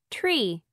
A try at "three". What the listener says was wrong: ¿Golpea o no golpea? ¿Hace tree o hace three? Cha, cha, cha. That sound. Three. Entonces, this is three. Not three. Three. Ahí está la diferencia, chicos.